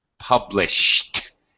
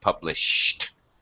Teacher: After an SH, past tense regular verb, ED will always be pronounced as a T.